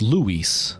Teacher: But in English, you emphasize the U a lot more, so it's Luis.